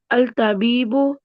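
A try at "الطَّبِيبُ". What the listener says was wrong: फिर अल तबीबू। बुरा नहीं लगता अल तबीबू पढ़ते हुए? बुरा नहीं लगता? यहाँ पे आके अल तबीबू कैसे हो गया मुझे बताएं, जबकि लाम लाम खाली है।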